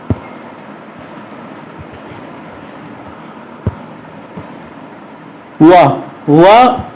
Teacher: जब हम उच्चारण करेंगे तो ओंठ हमारे किधर को आएंगे? आगे को आएंगे। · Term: दंत ओष्ठ